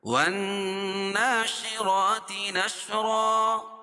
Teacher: نون مشدد اور کھڑا زبر غنہ ہوگا اور اس کو 1 الف کے برابر کھینچ کے پڑھیں گے